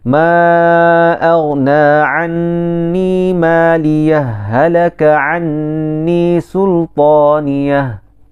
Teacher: Kita syadahkan dia. Maksudnya kita idghamkan dia sebab ha bertemu dengan ha. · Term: idgham mithlain